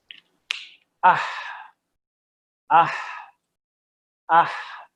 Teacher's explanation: ہا کی آواز ختم ہو گئی ہے، کچھ ہوا ہے جو باقی ہے. اح، اس صفت کو ہمس کہتے ہیں.